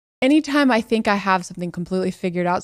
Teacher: She starts with the word anytime. She starts with a glottal stop.